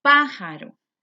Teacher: lleva el acento en pa en la antepenúltima sílaba. Va tildada.